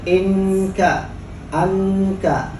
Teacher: nunnya di ujung lidah, sementara kafnya berada di pangkal lidah sebelum lak-lakan · Itu kaf, cirinya dikeluarkan udaranya, ada namanya hamas.